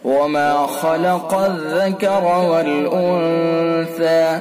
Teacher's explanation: خا کو پر کر کے پڑھیں گے، خا پر ہوگا اور قاف بھی پر ہوگا